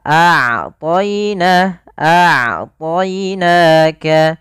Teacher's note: Sedangkan rakhawah mengalirnya suara. Maka ketika melafalkan ain, usahakan kita di antara keduanya tengah-tengah tidak terlalu dialirkan dan tidak pula terlalu ditahan suara kita. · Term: bainiah